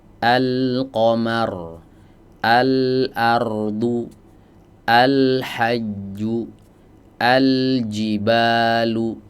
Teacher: semuanya dibaca izhar ya, karena huruf setelahnya jauh dari makhraj huruf lam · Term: lam qamariyah